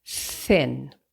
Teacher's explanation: The tip of the tongue become is placed interidentally and we turn off the voice and we say th like in the word thin th right it's quiet. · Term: voiceless th